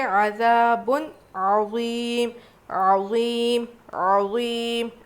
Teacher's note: عظیم عظیم ایسے پڑھیں گے، 5 الف کے برابر کھینچ کے پڑھنا ہے